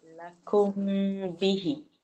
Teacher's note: Nama dia ikhfa syafawi. Mim mati bertemu ba. Dia nama dia ikhfa syafawi. Dia dengung 2 harakat.